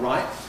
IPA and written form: raɪʔ (right)